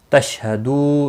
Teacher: دو واو مدہ ہے، ایک الف کے برابر کھینچ کر پڑھیں گے، اور نون وقف کی صورت میں نون ساکن پڑھا جائے گا، وقف بالاسکان ہوگا، مد العارض وقفی ہوگا، 3 سے 5 الف کے برابر کھینچ کر وقف کریں گے۔